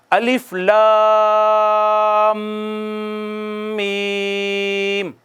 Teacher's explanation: یہ جو بڑی مد ہوتی ہے نا، بڑی مد، اس کو 4 سے 5 الف کھینچتے ہیں